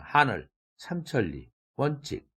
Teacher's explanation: 예를 들면 하늘, 삼천리, 원칙 등의 단어를 발음할 때 하, 삼, 원 이 첫 음절에 강세가 있어서 뒤음절보다 크고 높게 발음되죠. 소리가 크게 나죠.